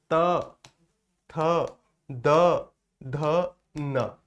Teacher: त थ द ध न ये दंत के द्वारा बोले जाते हैं जिव्या दांतों को स्पर्श कर रही है